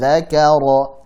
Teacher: dzaka tipis ra tebalkan